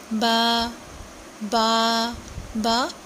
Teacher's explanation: جب دونوں ہونٹوں کے تر حصے آپس میں ملتے ہیں تو با ادا ہوتا ہے